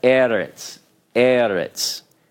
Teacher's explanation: this particular word is stressed not on the final syllable · Syllable 1 is open, right? It's open and it's accented.